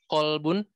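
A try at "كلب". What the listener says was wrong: Kalbun, bukan kolbun. Kalbun. Kolbun. Jangan salah ya. Kalbun.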